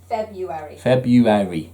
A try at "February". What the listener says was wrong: Don't pronounce the first R. It's February. You don't pronounce it. February.